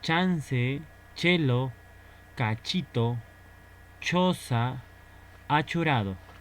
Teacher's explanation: Este es un sonido palatal, cuando la lengua choca con el paladar